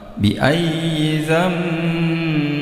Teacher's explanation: Ini ada iklab bi ayyi nun sukun bertemu dengan ba, ini berubah menjadi mim